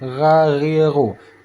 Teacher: Dan yang kedua pada bahagian ujung kerongkongan yaitu huruf ghain. Huruf ghain cara bacanya sama, diletaknya di ujung kerongkongan, ghariru. Kalau huruf kha seperti ada kerokan, kalau huruf ghain yaitu seperti ada getaran, ghariru.